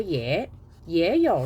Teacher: 那它有2个字都是第3声连在一起，那把这个也呢要变读3、5了